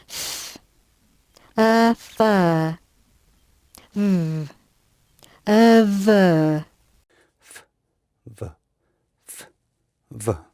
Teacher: 이 바깥을 이렇게 하는 게 아니고요. 입술 안쪽 말랑말랑한 부분을 윗니로 살짝 얹어서 거기서 마찰만 시켜서 내시면 돼요.